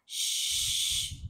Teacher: shin ada sukun masuk ke dalam shin dan sifat huruf shin tafasyi. Tafasyi dalam bahasa Melayunya hambur.